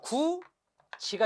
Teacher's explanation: 그런데 구디에서 그치면 안 되고요. 디귿과 이가 만나면 뭐가 된다? 디귿이 지읒으로 바뀌어요.